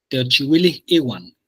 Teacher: En este caso, esta H sí sonaría porque la siguiente es una I. O sea, Teochihuili Iwan. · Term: aspiración